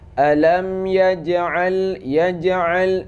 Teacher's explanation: Yaj ini qalqalah sughra, sedikit aja pantulannya.